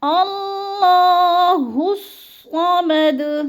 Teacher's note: ہا کو صاد سے ملانا ہے